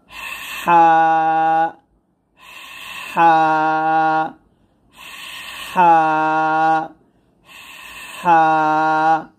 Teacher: হাটা গলার মাঝখান থেকে চাপ দিয়ে চিকন করে বলতে হবে